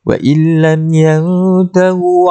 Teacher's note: Ikhfa hakiki. Dengunglah sama-sama di antara bunyi nun dan juga ta.